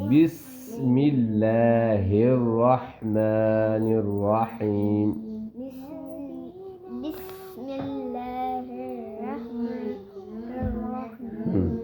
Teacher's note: سین کی سیٹی کی طرح آواز آئے گی